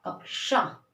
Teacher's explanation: कक्षा यानी क की भी आवाज आ रही है और श की भी आवाज आ रही है ना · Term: संयुक्त व्यंजन